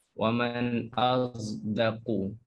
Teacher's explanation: itu campuran suara bunyi huruf sod dengan zai menjadikan satu bunyi huruf za. Waman azdaku seperti huruf za yang disebut oleh orang awam yang mereka tak letakkan pada makhrajnya yang betul. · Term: ismam